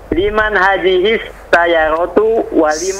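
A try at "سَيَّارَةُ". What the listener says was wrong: Sayyaratu. Sayyaratu. Ya-nya panjang.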